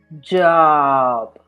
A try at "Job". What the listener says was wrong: rounded your lips a little bit, so it sounded more like an O. So try to be conscious of not rounding your lips. So intenta no redondear los labios.